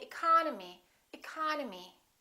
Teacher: the second syllable is stressed therefore this e and this o are reduced we don't say II call no me we say economy economy